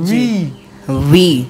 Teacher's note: এটা directly বি না হয়ে এটা হবে ভি ভি ভি মানে ওপরের দাঁত নিচে নিচের ঠোঁটের সাথে চেপে গলার ভাইব্রেট হবে কম্পন হবে ভি ভি ডিরেক্টলি ভি ও বলবো না বি ও বলবো না